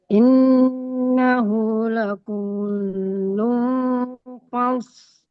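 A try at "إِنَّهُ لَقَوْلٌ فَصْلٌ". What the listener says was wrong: Nah, L-nya harus terdengar. Oke, L-nya jangan tebal. L. L. L. L.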